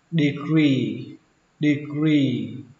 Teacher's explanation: Xuống giọng âm đầu tiên và kéo dài âm y cuối ra.